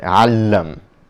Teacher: the L is sort of doubled or emphasized or strengthened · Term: geminated